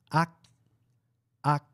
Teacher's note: quando está na posição final da sílaba, ela soa como AK. AK. O som fica mais preso. A gente não fala AK, mas sim AK. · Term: patim